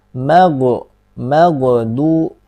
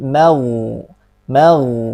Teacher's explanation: Huruf ghoin sukun. Jangan sampai terpantul ya ini. Jangan sampai terpantul.